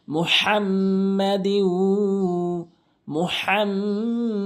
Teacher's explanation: সল্লি আলা হা দিয়ে মিমকে তো গুন্না করতেই হবে এবং হাটি হলকের মাঝখান থেকে চাপ দিয়ে উচ্চারণ করতে হবে